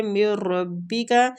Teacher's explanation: ادغام بلا غنہ ہو رہا ہے، غنہ کے بغیر، نون ساکنہ کے بعد را آ رہا ہے